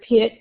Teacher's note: The vowel in the word pit is a short sound because it is followed by a voiceless sound which is uh t.